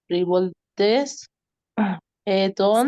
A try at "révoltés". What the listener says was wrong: Sin la S. Revolté. Sin la T. Et on